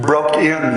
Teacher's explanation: a foot with the first syllable long and and highly stressed it has both the inherent length of the long o but also stress on both syllables · It has both the inherent length of the long O, but also stress on both syllables, including the short I of in. The second syllable is stressed but short, or with a less heavy ictus. One might give less weight to in than to broke, because broke is the main word after all. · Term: reversed spondy, reversed spondi